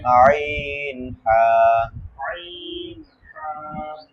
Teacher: 2 নম্বর মাখরাজ, 2 নম্বর মাখরাজ হলকের মধ্যখান হইতে